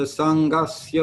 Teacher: the dot under the N in Sangasya indicates that the N will be pronounced with the middle of your tongue up against the roof of your mouth midway back. So it's a little more of a nasal sound than an N sound with your tongue up against your teeth.